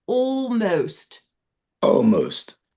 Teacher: Don't even worry about the L. We're gonna kind of swallow the L.